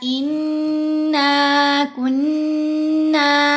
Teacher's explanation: मिर रब्बिना इन्ना कुन्ना, दोनों जगह पर देखो नून के ऊपर तशदीद भी है, नून के ऊपर ज़बर भी है, और ज़बर के बाद अलिफ भी लग रहा है, तो नून पर गुन्ना भी होगा दोनों जगहों पर। फिर हरूफ मद्दा भी है, तो दो दो हरकत की मिकदार लंबा भी करना है।